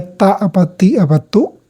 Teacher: huruf ta itu adalah suara yang keluar dari ujung lidah ketemu dengan pangkal gigi depan